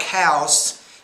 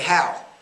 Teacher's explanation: you're not putting s's when your words end in s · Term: final s sounds